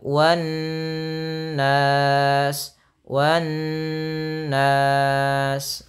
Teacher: Karena ada nun bertasdid, hukumnya gunnah.